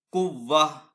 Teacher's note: دیں گے۔ تو اس طریقے سے ہم کلمے کے آخر میں گول تا کو خواہ کوئی بھی اس کے اوپر حرکت ہو یا تنوین، اسے وقف میں ہا ساکن سے بدل دیں گے